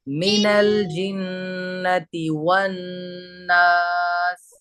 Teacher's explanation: واو میں ہوٹ گول ہوں گے